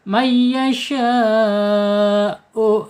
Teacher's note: Hamzah atau alif ada di tenggorokan bawah ya.